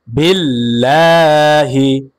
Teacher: লামের উপরে খারা জবর আসার কারণে এক আলিফ টান হবে মাদ্দে তবাই।